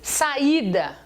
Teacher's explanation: I tônico, formando hiato, sozinho na sílaba.